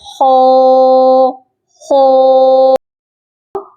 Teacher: اگر ہم ہونٹ گول کر کے پروناؤنس کریں گے تو یہ خا کی بجائے خو خو، خا واو خو بن جائے گا۔